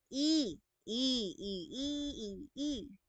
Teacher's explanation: Yung dila natin ay nasa taas at nasa harap naman po.